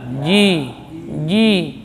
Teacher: bagian tengah lidah juga terangkat ke langit-langit atas